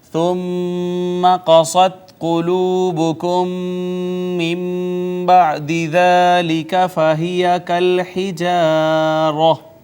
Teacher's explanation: نون ساکن کے بعد با آئی، با حرف اقلاب تھا، اس نے ماقبل نون ساکن کو چھوٹی میم سے بدل دیا